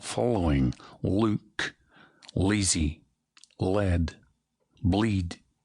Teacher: whereas the Irish had a light L, the Scottish uses a dark L